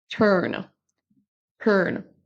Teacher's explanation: on ne prononce pas turn comme on pourrait avoir le son U français